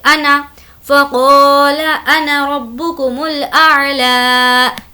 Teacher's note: لفظ انا کا الف نہیں پڑھا جائے گا